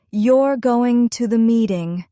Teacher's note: For example, say the sentence, you're going to the meeting. If your voice falls at the end, it's a statement. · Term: intonation